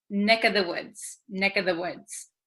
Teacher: this of becomes just the vowel sound